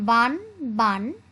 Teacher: ন এবং মূর্ধন্যর উচ্চারণ হচ্ছে অভিন্ন